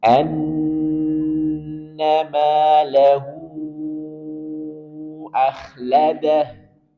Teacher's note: di sini ada ha setelahnya Hamzah dalam dua kata yang berbeda maka berlaku hukum maksilah thawilah jadi empat atau lima harakat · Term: matsilah thawilah